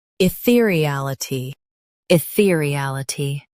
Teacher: Stress real and keep I soft.